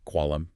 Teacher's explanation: The Q sound, which is a hard guttural stop deep in the back of the mouth, used in words like qualam, meaning pen.